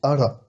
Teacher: cette fois-ci, il se prononce plutôt comme un R roulé, ara. Là, je vous apprends rien, ce sont des trucs que vous avez déjà appris normalement.